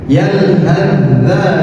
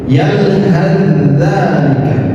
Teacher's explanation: Yalhazalika sama sukun bertemu dengan dal. Cara membacanya adalah dengan diidgamkan. Seakan-akan tsa ini tidak ada jadi langsung ditasdidkan.